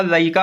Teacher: शब्द के मध्य में ड ध्वनि हट जाती है, जैसे लड़का का लइका हो आदि ड ई में बदल जाता है।